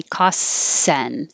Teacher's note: for costs you don't have to say the t you can just skip it